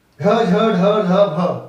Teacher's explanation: महाप्राण सघोष में ज्यादा ताकत लगेगी